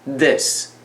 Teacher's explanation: 所以你把舌头放在 d 的位置往前面一点，在牙齿上。